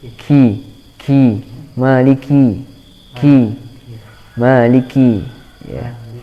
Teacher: Maliki, tapi harus dihentak, awalnya dihentak kemudian keluar udara ya.